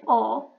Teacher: When you say o, your tongue would move bit lower and it would be in back position. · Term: o sound